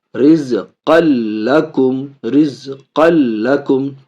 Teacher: تنوین کو لام سے ملا رہے لیکن بغیر غنہ کے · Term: بلا غنہ